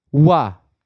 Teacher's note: दूसरा जो होता है उच्चारण मतलब स्थान आधार पर देखेंगे उसमें आपका दंतोष् यानी दांत और ओठ से मिलकर के इनका उच्चारण नीचे के ओठों और ऊपर के दांतों द्वारा होता है।